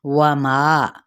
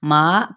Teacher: وما، اچھا ماں نہیں کہنا، نیزل ساؤنڈ بالکل نہیں آئے